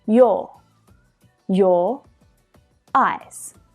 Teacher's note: So technically here, I'm linking two vowel sounds together. Your eyes. And we do that with the linking R.